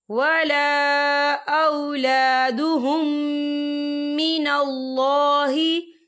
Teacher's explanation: ولا اولادہم من اللہ، یا دیکھیے اولادہم، یہاں میم ساکن ہے اور میم ساکن کے بعد جو ہے پھر میم آ رہا ہے، تو یہاں پر ادغام شفوی ہوگا اور ہم یہاں غنہ بھی کریں گے